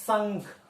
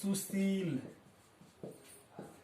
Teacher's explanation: जहां पर भी ये तालम स आएगा वहां पर स का उच्चारण होने के साथ ही सामने की तरफ हवा आपको निकलता हुआ मालूम पड़ेगा